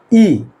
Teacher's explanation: हमारी जीभ कहां जाके दंत में सीधे टच हो रही है तो क्या कर सकते हैं इसको अग्र स्वर कह सकते हैं